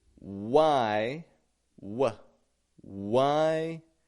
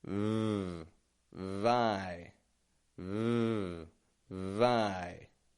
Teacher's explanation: bottom lip up, lightly touching my teeth, and holding that v sound out. And then I got a vowel coming after it.